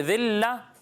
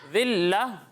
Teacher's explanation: سیٹی کی آواز نہیں آنی چاہیے، ٹھیک ہے. ذال کی ادائیگی میں سیٹی کی آواز نہیں آئے گی